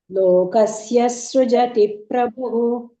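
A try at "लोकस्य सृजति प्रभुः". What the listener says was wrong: Here, lokasya srujati prabhu. You need not introduce this here. Lokasya, you are stressing there. For this combination, you need not stress.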